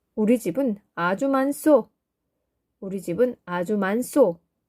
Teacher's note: 니은 히읗 받침, 그 다음에 시옷소가 왔죠. 그랬더니 시옷이 시옷 그대로 발음되는 것이 아니라 쌍시옷이 되죠